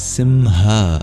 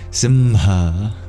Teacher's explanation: it's a voiced gutural consonant H but with the opening of the mouth after Sim kind of